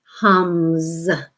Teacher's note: When you hum a sound, now hum, again, like some of the other words, we can add this S at the end, hums. And it's the voiced S, so it's going to sound more like a Z